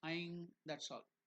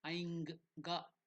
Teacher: It should go and end in the nose. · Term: nasal